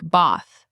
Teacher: In Boston, it can sound like bath with a longer, more open vowel.